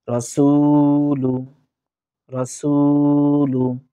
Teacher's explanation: সু, পেশের বাম পাশে যজমালা ওয়াও আমরা এক আলিফ পরিমাণ টানার চেষ্টা করব।